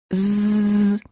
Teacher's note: as in the word zoo now let's make it longer z you should feel a vibration in your vocal chords this is how you know that the z sound is voiced